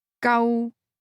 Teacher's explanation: Spoken with a mid-level tone 救 means rescue in Cantonese.